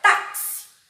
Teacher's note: Táxi, sílaba tônica no tá.